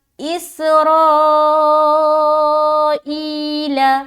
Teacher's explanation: تو یہاں پر دیکھیے اس میں سیٹی کی آواز آ رہی، را میں 3 سے 4 الف کھینچیں گے کیونکہ مد متصل ہے، را کو موٹا رکھنا ہے اور 3 سے 4 الف کھینچنا ہے